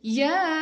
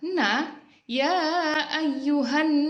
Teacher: hukum bacaannya adalah Mad Jaiz munfasil yang panjangnya adalah lima harkat